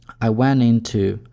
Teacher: Мы здесь отбрасываем звук т, потому что если у нас есть кластер н и т, это по сути одна и та же артикуляция, мы имеем право это сделать.